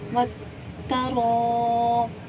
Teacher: رو الف مد زبر رو وترو 3 سے 4 مقدار کھینچیں گے